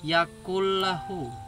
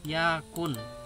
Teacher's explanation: nafas ini mempunyai hukum bacaan Idgham bilagunnah kembali lagi ke pengertian memasukkan pada huruf sesudahnya dan dibaca tanpa dengung